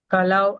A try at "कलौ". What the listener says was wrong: கலவு இல்ல, கலாவ். கலாவ் நெடில் வரணும். ஆ